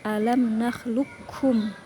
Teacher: Idgham mutaqorbain. Jadi dibaca qof-nya dimasukkan ke kaf diidgamkan.